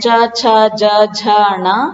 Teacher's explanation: ये जो वर्ण है च छ ज झ ण ये तालु का स्पर्श करते हुए बाहर निकलते हैं। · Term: च वर्ग